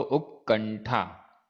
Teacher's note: यहां उक्क में बिंदी हो गई और फिर ठा, तो उक्कंठा। अनुस्वार के स्थान पर णा हो गया, आधा णा